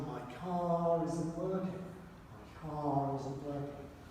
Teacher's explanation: now we pronounce the r if a vowel follows immediately